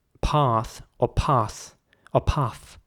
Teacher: the a is again pronounced like an ah in british english